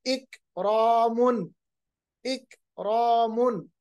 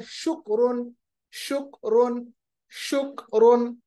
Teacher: कैफ की आवाज जब हम जज्म के साथ पढ़ेंगे तो कैफ की आवाज को हम रिबाउंड नहीं करेंगे, कलकला नहीं करेंगे, आवाज को वापस नहीं लाएंगे, बल्कि अपने मखरज में ही उसकी आवाज को दबाएंगे।